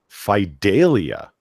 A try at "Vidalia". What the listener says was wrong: Vidalia with a V.